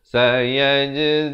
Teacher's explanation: Sayaj ada qalqalah di sini, jim.